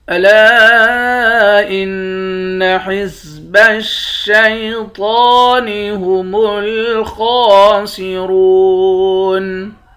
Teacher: لام کے بعد الف ہے، اس الف کے اوپر مد ہے، اس مد کو 3 الف کے برابر کھینچتے ہیں، نون مشدد پر غنہ کریں گے. تو کو موٹا بھی پڑھیں گے، ایک الف کے برابر کھینچیں گے. · خا کو موٹا پڑھیں گے، اس کو بھی ایک الف کے برابر کھینچیں گے، دونوں کے اوپر کھڑا زبر ہے. را کو موٹا پڑھیں گے، واو کے ساتھ ملا کر ایک الف کے برابر کھینچ کر پڑھتے ہیں